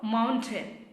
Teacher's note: It's not a I-N sound. It's N.